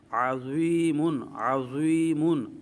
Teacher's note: ضا کا مخرج زبان کا سیرہ اور اوپر والے دانتوں کے اندرونی کنارے سے، یا مدہ یہ جوف دان منہ کے خالی حصے سے ادا ہوتی ہے، اور میم جو ہے دونوں ہونٹوں کے خشکی والے حصے سے، اس کو حرف بری بھی کہتے ہیں۔ ضا جو موجود ہے اس کو پڑھتے وقت اس کو پر کریں گے، کیونکہ اس کا تعلق حروف مستعلیہ سے ہے